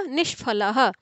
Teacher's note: संधि संपन्न होगी तो विसर्ग पलटकर मूर्धन्य षकार में परिवर्तित हो जाएगा